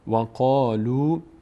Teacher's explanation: قاف فتحه بعدش الف پر خونده میشه چون از اون 8 حرف هست.